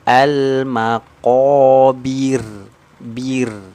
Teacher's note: Tadi kalau yang huruf ra tebal ya, ra-nya mati didahului dengan harokat fathah, dhammah itu dibaca tebal. Berarti kalau ro-nya mati didahului dengan harokat kasroh, berarti dia dibaca tarqiq, dibaca tipis.